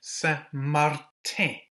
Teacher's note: Martin, Saint Martin, we've got the I with the circumflex, with the little hat on it. So that gives us that nasal sound, that eh sound.